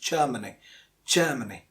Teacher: the r is silent because it is followed by a consonant sound after r next after r there is a consonant so it is germany · Most of us get it right, but some of us at least say Germany, but it's not Germany because the R is silent, because it is followed by a consonant sound after R